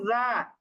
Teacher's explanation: দুইটাই জিহ্বার আগা উপরের দাঁতের আগার সাথে লাগিয়ে নরম করে উচ্চারণ করছি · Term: জাল